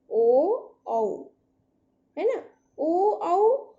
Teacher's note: ओदौतो कंठोष्ठम का मतलब ओ औ है ना, ओ औ, इनका उच्चारण स्थान कंठोष्ठम यानी कंठ और ओष्ठ। तो ओ और जब औ का हम उच्चारण करते हैं तो कंठ और ओष्ठ दोनों की आवश्यकता होती है, दोनों का स्पर्श होता है, तो इसलिए ओ और औ का उच्चारण स्थान कहते हैं कंठ और ओष्ठ से होता है, इसलिए इन्हें कंठ और ओष्ठ, इसलिए कंठोष्ठ वर्ण कहते हैं।